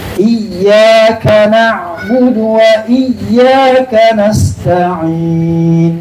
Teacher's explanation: itu huruf ya keluar dari tengah lidah kita